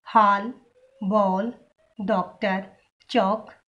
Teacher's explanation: इसका उच्चारण आ और ओ के बीच की ध्वनि के रूप में होता है। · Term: आगत ध्वनि